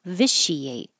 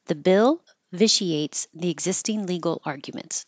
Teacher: The T-I here is a sh.